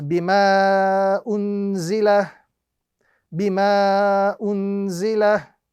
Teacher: the duration of this particular mud is anywhere between 2 to 3 seconds